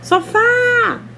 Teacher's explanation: Tentem gritar sofá. A sílaba mais forte vai ser fá.